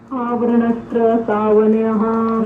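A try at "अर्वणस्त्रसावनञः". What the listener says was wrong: नहीं, आवरण नहीं, अर्वणस्त्र सावनयः। अर है। अर्वणस्त्रय, ऐसे यहां तक कर लीजिए। अर्वणस्त्रय बोलिए। अर्वणस्त्रय सावनयः।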